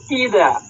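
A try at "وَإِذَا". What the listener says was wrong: ওয়াওটা আবার আইন না বেরিয়ে যায়, হ্যাঁ, ওয়াওটা ওয়াও বেরোবে স্পষ্টভাবে।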